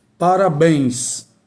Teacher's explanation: Então, a sílaba mais forte é exatamente a última. · Então, a sílaba mais forte é a última. Parabéns. Então, obrigatoriamente, tem que ser acentuada. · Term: oxítona